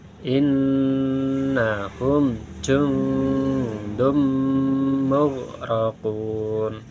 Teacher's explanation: huruf nun sukun bertemu dal huruf ikhfa. Karena bacaan ikhfa nun sukun ini menjadi samar, kalau tidak bisa menjadi ng.